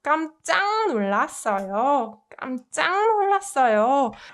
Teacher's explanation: 윽느 combined softens 윽 to 응 sound, right? So it's more pronounced 깜짝 놀랐어요.